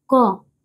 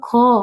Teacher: क बोलने में ऊर्जा नहीं लगा। जैसे ही बोला ख तो आपकी ऊर्जा व्यय हो गई।